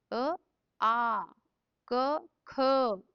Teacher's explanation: ಕಂಠದಿಂದ ಹುಟ್ಟಿರ್ತಾವ್ರಿ. ಇಲ್ಲಿ ಎಲ್ಲೂ ಬಾಯಿ ಮೂವ್ಮೆಂಟ್ ಆಗಲ್ರಿ, ನಾಲ್ಗಿನೂ ಟಚ್ ಆಗಲ್ಲ, ಮೂಗಿನಿಂದ ಗಂಟ್ಲಿಂದ ಬರ್ತಿದ್ರಿ.